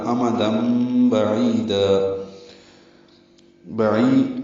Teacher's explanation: بعی عین وسط حلق سے نکالیں گے ، یا مدہ ہے، اور دن کی جگہ دا ہوگا، وقفن · امم میم کو جلدی سے پڑھنا ہے حمزہ کو بھی، اور تنوین کے بعد با آنے کی وجہ سے اقلاب یا ابدال ہو رہا ہے، بدل دیا، دن کی جگہ دم پڑھ دیں گے